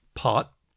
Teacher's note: there's unaspirated te like as in pot